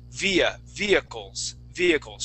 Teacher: we wouldn't pronounce that H in the word